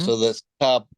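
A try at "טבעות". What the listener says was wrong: Very good. Tabaot. Tabaot.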